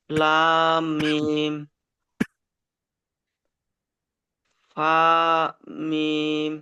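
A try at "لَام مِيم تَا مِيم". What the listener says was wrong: ফা নয়, তা। দেখেন ফা আর কফ হতে গেলে মাথাটি এরকম গোল হতে হবে। যেখানে আপনি দেখবেন এরকম মাথা গোল হয়ে একটি নোক্তা, তো ফা। আর মাথা গোল হয়ে দুটি এরকম মাথাটি এরকম গোল হতে হবে, তবে হবে ফা।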